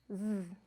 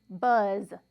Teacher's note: that you hear at the end of the word buzz now we call the sound a voiced sound and that is because if you take your pointer finger and your middle finger and place that on your throat you will feel that vibration